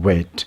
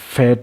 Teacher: ویٹ جو ہے یہ وائسڈ ہے اور فیٹ جو ہے یہ وائس لیس ہے۔